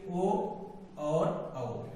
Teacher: इन दोनों वर्णों को हम उच्चारण देंगे तो कंठ की भी सहायता लेनी पड़ती है और ओष्ठ की सहायता लेनी पड़ती है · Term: कंठ ओष्ठ